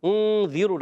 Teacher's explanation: ذال کی ادائیگی کلیئر رکھنی ہے، ذال کو زا سے نہیں بدلنا · ذال کی زیر کو لمبا نہیں کریں گے، را پر پیش ہے، را پر پڑھیں گے.